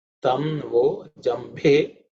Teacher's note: Bha is again fourth letter in the pa varga, should be aspirated.